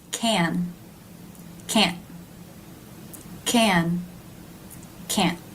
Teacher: Can you tell that the first word is longer? The stop T of can't chops it, makes it a little bit more abrupt.